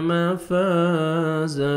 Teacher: الف مدہ 1 سیکنڈ آپ نے فا کو کھینچنا ہے۔ جب سٹاپ کریں گے تو زن کو الف مدہ ہو جائے گا، زا زبر الف زا، اور زا کو زور سے پڑھنا ہے، 1 سیکنڈ کھینچنا بھی آپ نے۔